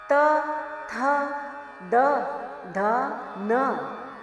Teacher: त थ द ध न दंतीय कहे गए क्योंकि इनके उच्चारण के समय जीभ दांतों से लगती है।